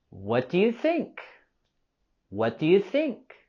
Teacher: And while asking this question, we're going to have a falling intonation.